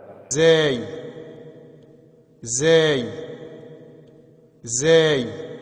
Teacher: نوک زبان اوپر نیچے کے دانتوں سے مل کر زا ادا ہوتا ہے